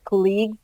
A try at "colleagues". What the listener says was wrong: Colleagues. I've not colleagues, but colleagues. So stress is on the first, not the second syllable.